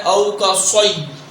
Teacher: صاد کو سیٹی کے ساتھ پڑھنا ہے اور پر پڑھنا ہے